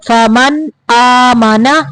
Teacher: نون کو ظاہر کرنا ہے